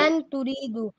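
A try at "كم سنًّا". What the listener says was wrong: سین نہیں, سنن ہے, سنن. کم سنن.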